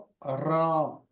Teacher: जबान की नोक को हम क्या करेंगे दांतों के पिछले हिस्से में लगाएंगे गम से एरिया में कहां पर जहां पर थोड़ा सा उभार है रिस है वहां